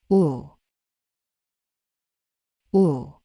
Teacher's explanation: The u sound is heavier and lower than o